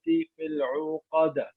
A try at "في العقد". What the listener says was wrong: Don't add a wow.